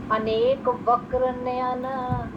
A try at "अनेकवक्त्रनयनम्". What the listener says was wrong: ये वक्र नहीं है, ये वक्र नहीं है, अनेक वक्त्र नयन, वक्त्र वक्त्र वक्त्र